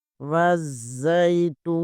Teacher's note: تا پیش کے آگے واو ساکن ہے، یہاں پر بھی واو مدہ ہوگا، اسے بھی 1 الف کے برابر کھینچیں گے